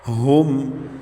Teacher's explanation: میم ساکن کے بعد ہا آ رہا ہے تو بغیر غنہ کے پڑھیں گے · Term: اظہار